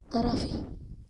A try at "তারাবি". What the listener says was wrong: তারা ফি না, তারাবি। তারাবি।